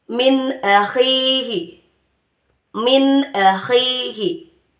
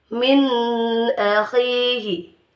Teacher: pengucapan nun sukun atau tanwin dengan jelas tanpa didengungkan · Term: izhar halqi